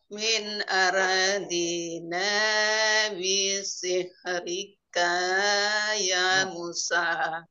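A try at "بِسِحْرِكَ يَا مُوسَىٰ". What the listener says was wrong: K-nya kepanjangan. Bisihrika ya Musa.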